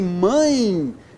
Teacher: eu tenho um ditongo decrescente nasal, por quê? Porque a vogal é nasal, quem manda é a vogal.